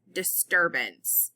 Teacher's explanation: usually the U would say an uh sound but when it's combined with the r it comes out with a r sound